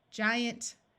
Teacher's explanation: This G will have the soft sound of J because of the I, and the suffix ANT usually schwas, and instead of having a clear ant sound, sounds more like int or unt